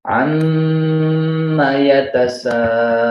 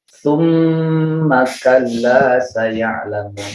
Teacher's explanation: Mim bertasydid maka ditahan 3 ketukan atau 3 harokat dan keluar gunnah dengung dari hidung. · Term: gunnah musyaddadah